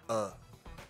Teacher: 最中间的这个音就是嘴巴打开时最放松最中间的音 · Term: schwa